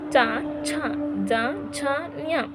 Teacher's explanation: ತಾಲವ್ಯ ಅಂತಂದ್ರೆ ಏನು ಹೇಳಿದ್ದೆ ನಾಲಿಗೆಯ ಮೇಲ್ಭಾಗದ ವಿಶಾಲವಾದ ಅಂಗಳ ಅಲ್ವಾ ಇದರ ಸಹಾಯದಿಂದ ಹುಟ್ಟುವುದರಿಂದ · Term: ತಾಲವ್ಯ ಅಕ್ಷರಗಳು